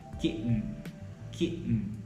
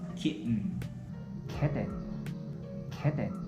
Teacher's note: See, I'm not popping my T sound or I'm not aspirating the sound. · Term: held T